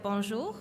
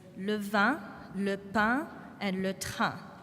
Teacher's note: So the N or the M essentially becomes silent. So in bonjour, you can hear that nasal O-N, but we don't pronounce the N.